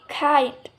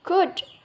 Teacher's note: The two examples above include velar, plosive